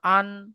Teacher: তানবিনের আওয়াজ নাকের মধ্যে থেকে হয়। আপনি যখন তানবিনটা উচ্চারণ করবেন, এই তানবিন শব্দটা আপনি যখন উচ্চারণ করবেন, তখন দেখবেন আপনার নাকের মধ্যে কেউ, আওয়াজটা আসছে।